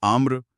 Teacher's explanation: वो बातचीत में एक स्पीड ब्रेकर की तरह होते हैं। जैसे आम्र म के तुरंत बाद र बोलना पड़ता है